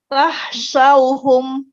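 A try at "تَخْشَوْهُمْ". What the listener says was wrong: Kho-nya kurang tebal sedikit lagi. Taukhshauhum.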